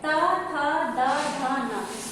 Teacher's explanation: ता बोलोगे आपके जो दांत है ना, आपकी जो जीभ है वो दांत से स्पर्श करेगी, और अगर दांत का स्पर्श नहीं करती है तो वो आप बोल नहीं पाओगे।